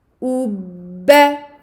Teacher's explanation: Donc j'avance les lèvres pour la dhamma, je reviens avec mes lèvres à la normale ou petit sourire pour le premier ba, ensuite j'ouvre les lèvres pour le deuxième ba. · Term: shadda